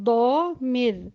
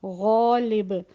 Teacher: ضا بھاری پڑا جانے والا حرف، اس میں استعلا بھی ہے اور اطباق بھی ہے، تو یہ بہت زیادہ بھاری پڑا جائے گا